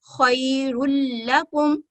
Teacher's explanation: जैसे ये एक मिसाल है, खैरुल लकुम, इसमें हम रुन नहीं पढ़ेंगे, तनवीन की दोनों गुन्ना नहीं करेंगे, नाक से उसकी तनवीन की आवाज नहीं निकालेंगे, बल्कि सिर्फ एक हरकत को पढ़ेंगे और लाम के साथ मुशद्दद के साथ मिलाते हुए अदा करेंगे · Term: इदगाम कामिल